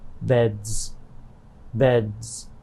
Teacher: bed de is a voiced sound therefore when it becomes plural the s is pronounced as z beds beds voiced sounds often go with the voiced ending z